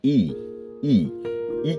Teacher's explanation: দেখুন আমাদের ঠোঁট চ্যাপ্টা হয়ে যাচ্ছে বা প্রসারিত হয়ে যাচ্ছে, ডানে এবং বামে প্রসারিত হচ্ছে ই ই ই কিন্তু যতটা প্রসারিত হয় ঠোঁট ততটা প্রসার ঘটানোর পরেই কিন্তু এটাকে উচ্চারণ করতে হয়। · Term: প্রসৃত